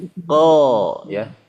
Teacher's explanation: Yang menyebabkan suara tebal itu ya, pangkal lidah naik.